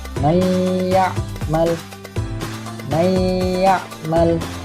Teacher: Nah, ketika nun sukun atau tanwin yang bertemu salah satu daripada keempat huruf ini, maka dinamakan idgham bi gunnah, dan panjangnya adalah satu alif atau 2 ketukan